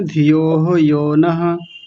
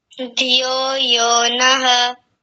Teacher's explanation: ऐसा लगा जैसे आपने यहाँ विसर्ग लगा दिया हो, धियो के बाद में ऐसा बोला आपने, धियो हो यो नः, ऐसा बोला था।